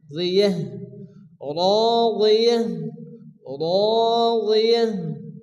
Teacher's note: আয়াতের শেষে গোলতা আসলে তা হা সাকিনে পরিণত হয়।